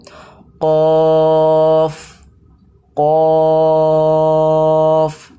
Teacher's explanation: কফটা অবশ্যই একটা পুর অক্ষর, তাই জন্য আমরা মুখ গোল করে পুরভাবে বলবো